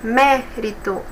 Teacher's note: de trás para frente a terceira Ou seja antepenúltima é a mais forte